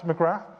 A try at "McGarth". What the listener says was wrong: The Irish pronunciation, so no th at the end.